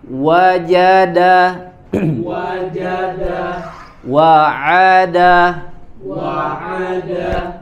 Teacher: kemudian Dal Jim itu tadi di ee Tengah lidah e kemudian Dal itu di ujung lidah ya ditempelkan ke tempat tumbuhnya gigi